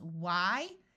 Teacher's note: in most of the United States wh has just the sound of w where the H is silent